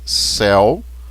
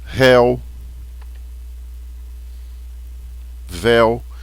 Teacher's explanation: Céu, o ditongo é aberto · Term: ditongo aberto